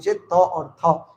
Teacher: दंत से उच्चारण स्थान हो त और थ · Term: त वर्ग